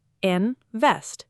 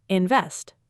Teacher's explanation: Two syllables, stress on the second